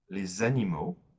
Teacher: Because we don't like to have two vowel sounds following each other, usually we'll make the liaison when there is an S following the word, an X or a D. The S will be transformed into a Z sound, like a Z. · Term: la liaison